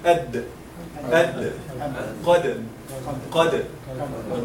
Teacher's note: Dal and ta, they are almost identical in everything, except for the qualities, which will be the last part that we're going to discuss, inshallah. Dal, it has one quality whenever it is sakina, which is al-qalqala.